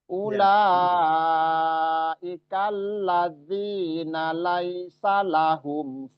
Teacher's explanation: Nah, ini tadi lazina ini agak kepanjangan tadi ya, agak kepanjangan. Padahal na dan sa ini nggak ada yang panjang, nggak ada mat dua-duanya.